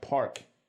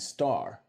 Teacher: most parts of North America which were colonized >> earlier still have Rs in words like park